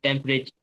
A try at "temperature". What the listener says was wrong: टी तो बोलते ही नहीं